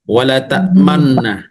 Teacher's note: menghimpun dua bibir untuk mengiringi huruf yang sukun sebagai isyarat damah dengan tanpa suara dan nafas. Jadi, bernafas pun tidak boleh, Bu. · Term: ismam